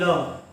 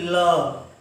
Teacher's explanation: जैसे बोले जाता है ल, यानी पार्श्विक व्यंजन को बोलने से जैसे ल बोलेंगे तो हमारी जीभा जो है तलवे में जाकर सटेगी और उसके दोनों बगल से हवा निकलेगी। बोलेंगे ल तो बगल से हवा निकलेगी, तो यही पार्श्विक व्यंजन बोला जाता है दोस्तों।